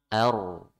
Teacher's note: ro sukun sebelumnya fathah dibaca tebal.